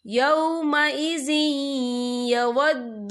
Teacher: تو یہاں پر ادغام ہوگا، تو ہم اسے تھوڑا سا غنّے کے ساتھ پڑھیں گے۔